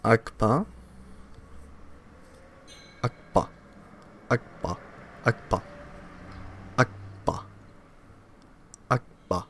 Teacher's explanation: Such sounds with simultaneous constriction at two places of articulation involve co-articulation or double articulation.